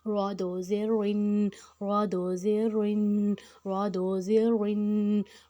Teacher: اب را موٹا حروف ہے، اس میں ہم اس کو یہاں پہ زیر میں بھی اس کو ہم موٹا ہی رکھیں گے